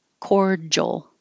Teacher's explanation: There's no J in there, but that D-I is a J.